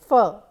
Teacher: Then, as the name suggests, labiodental, lip and the teeth is used to produce sounds like f, where the lip is hitting the teeth and blocking the air there before releasing it